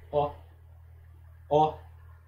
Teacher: representa a vogal O, como se tivesse um acento agudo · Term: role